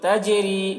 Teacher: جنات، اس طرح. تجری، جیم میں قلقلہ کریں گے، جیم حروف قلقلہ میں سے ہے، اس کے اوپر جزم ہے